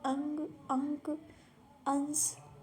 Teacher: अनुस्वार के उच्चारण में नाक से अधिक सांस निकलती है। जो अनुस्वार होते हैं जैसे कि आ यानी कि जो अनुस्वार होते हैं उनके उच्चारण में क्या होता है, नाक से अधिक सांस निकलती है और मुख से कम निकलती है।